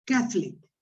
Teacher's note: we put the the stress on the first syllable